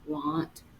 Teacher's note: that a doesn't say ah it says more of an uh a lazy sound